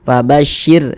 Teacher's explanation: huruf ra sukunnya dibaca tarkik, dibaca tipis sehingga pangkal lisan kita tidak naik terangkat ke atas, kita tipiskan.